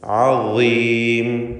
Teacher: ളാഇന് കുറഞ്ഞ തഫ്ഖീം കൊടുക്കുക, അതിന് കസ്റായതുകൊണ്ട് ഇസ്തിഅലാഇൻ്റെ അക്ഷരങ്ങളിൽ ഒന്നാണ് ളാ.